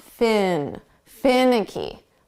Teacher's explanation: we're going to put the syllable stress on the first sound